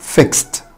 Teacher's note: الصوت الاخير هنا سا، يبقى الاي دي بتنطق تا، فعشان كده قلنا fixed.